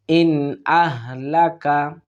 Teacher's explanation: ইন আহলাকা, ইন এখানে আমরা ইজহার অর্থাৎ স্পষ্টভাবে পড়ার চেষ্টা করব, কোনো গুণনা আমরা করব না